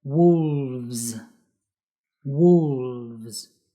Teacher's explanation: we need to use the slightly vibrating V (the vvvv) and the S sound like a buzzing zzzzz sound